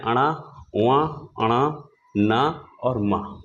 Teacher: वर्ण का उच्चारण स्थान नासिक भी माना जाता है क्योंकि इन इन व्यंजनों के उच्चारण में हमें मुंह के साथ-साथ नाक का भी सहारा लेना पड़ता है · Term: नासिक वर्ण